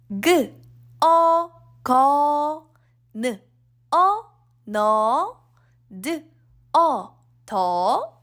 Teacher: This vowel is pronounced all. Although it's romanized as EO, it's really similar to UH. All, as in, uh-oh, something happened.